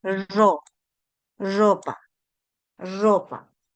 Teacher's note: En fonética esto se le conoce como vibrante múltiple.